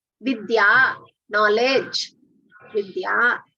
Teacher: So when you say vidya it should be alpa prana, not mahaprana.